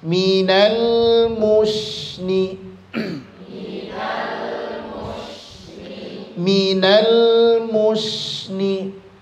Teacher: Minal mu-nya monyong, shinnya senyumkan biar nampak huruf istifalnya.